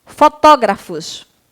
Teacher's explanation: fotógrafos é acentuada a tia porque é uma proparoxítona tá bom proparoxítona a sílaba tônica é a antepenúltima